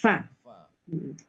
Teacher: fa itu ee harus ada hembusan ya